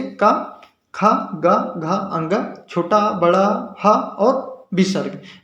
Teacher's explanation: का, खा, गा, घा, अंगा, छोटा, बड़ा, हा और विसर्ग, इन सभी का उच्चारण स्थान क्या है? कंठ है।